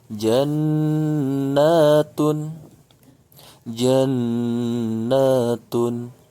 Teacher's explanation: Nun bertasydid ini pun ghunnah mesti ditahan dua harokat